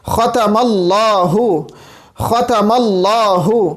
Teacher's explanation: خا جو ہے وہ ادنا حلق سے ادا ہوتا ہے